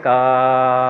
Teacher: ठीक है, ये कंप्लीट का अगर आप बोलते, अगर आप बोल रहे हैं जैसे मैं बोल रहा हूँ, देखिए ध्यान से, का अगर बोल रहे हैं तो अगर आप मान लीजिए का को और मतलब लंबा खींचेंगे, का अगर ऐसे बोलेंगे तो थोड़ी देर बाद अगर आप महसूस करेंगे ज़्यादा लंबा खींचने पे का, तो अगर कोई बीच से सुन रहा होगा तो उसे यही समझ में आएगा कि आप आ बोल रहे हैं। ठीक है, तो इसका मतलब ये का और आ दोनों का मिक्सचर है। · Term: का प्लस आ